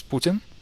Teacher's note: Actually, the proper pronunciation is Putin. The emphasis is on the first syllable.